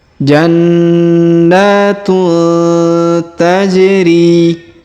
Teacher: Taj ini ada warna biru ya biru tua ini menunjukkan ada hukum tajwid yaitu diqalqalahkan atau dipantulkan pada huruf ja yang sukun